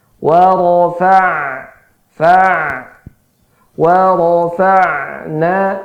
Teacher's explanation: Ain itu huruf yang mengalir sedikit getaran suaranya